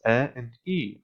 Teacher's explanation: the name of the letter A is a diphthong of the sounds a and E glide smoothly